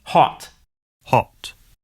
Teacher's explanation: the American O sound is an unrounded vowel, ah, while the British O sound is rounded, aw.